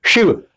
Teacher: जीभ से शिव की ध्वनि जो निकल रही है वो तालु के पास से निकल रही है, इसलिए ये भी तालु में के पास ही शामिल होता है श।